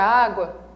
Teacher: perceba que o A, ele é forte, é uma vogal, só que esse U é pronunciado de forma muito fraquinha, ele é uma semivogal.